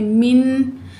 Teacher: नून साकिन के बाद आइन हरूफ हल्की में से है, तो हम क्या पढ़ेंगे, सिर्फ ज़ाहिर करेंगे